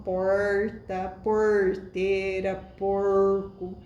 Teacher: É um R mais retrofletido ainda. É também um R retroflexo